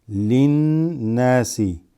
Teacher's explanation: So you're going straight from this lam into the noon because it's a huroof shamsiya.